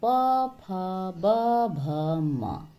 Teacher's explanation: प वर्ग ओष्ठ से उच्चारित होते हैं